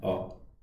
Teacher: जीभ साम्य अवस्था में रहती, जीभ में कोई ज्यादा हलचल नहीं होती ये स्वर के उच्चारण में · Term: मध्य स्वर